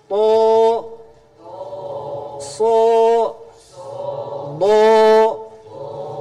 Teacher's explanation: Kumaha cara ngagemakkeun? Dinaikkeun suarana, ditekan ka luhur. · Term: tebal